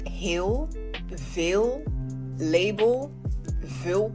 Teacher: in many cases the letter L in Dutch is not pronounced as an L at the end of a word and often at the end of a syllable it is pronounced